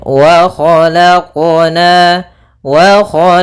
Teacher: dalam pelafalan qalqalahnya tidak ada tambahan Hamzah ataupun saktah ya Akan tetapi dia langsung saja mengalir wq wq nah seperti · untuk qalqalah dalam huruf qaf jangan sampai adanya saktah ataupun adanya tambahan huruf seperti huruf hamzah. Misalkan wa khalaqna itu ada tambahan hamzah.